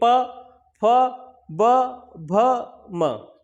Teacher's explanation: ठीक, ओष्ठ मतलब होता है दोनों ओठ, तो दोनों ओठों के परस्पर स्पर्श से पा वर्ग का उच्चारण होता है